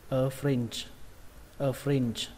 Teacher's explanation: Các bạn nhớ là âm chờ các bạn nhé, âm chờ không bắn hơi mấy, âm chờ rung thôi.